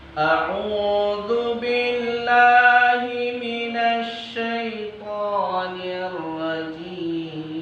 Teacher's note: Kita usahakan dari huruf A itu dari pangkal tenggorokan, dal dari ujung lidah dan ujung gigi kita. Kemudian dari syaitonir rajim kita usahakan bibir atas kita tidak bergerak.